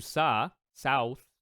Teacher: Japanese does not have a th like a th sound so what they do is they do SA